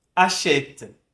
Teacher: Com a dupla consoante, o E vai ter um som aberto